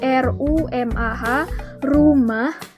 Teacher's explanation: bunyi ini tuh dihasilkan ketika ujung lidah bergetar melawan alveolus atau bagian belakang gigi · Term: Bunyi geletar atau Tril